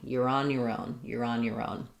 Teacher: So a little bit of stress on on and main stress on own.